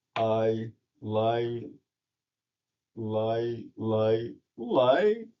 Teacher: the rising pitch occurs at the end of a string of a repeated syllable